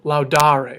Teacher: They each have the re, which we recognize as being the infinitive, but the vowel that goes in front of that re is different in every case. It's either a long A, a long E, a short E, or a long I